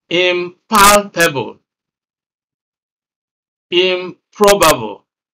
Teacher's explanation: after the prefix the next syllable is also stressed